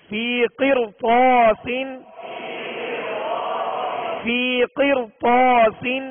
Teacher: بعد میں اسی کلمہ میں حروف مستعلیہ میں سے طا ہے، لہذا اس را کو بھی پر پڑھیں گے